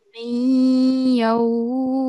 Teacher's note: just make sure that we are not making the sound of noon. Okay. We are just making a nasal sound.